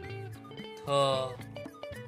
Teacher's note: Yang keempat, ada konsonan T. Suara ujung lidah, apikal, aspirasi. Lafalkan seperti konsonan TH dalam bahasa Indonesia.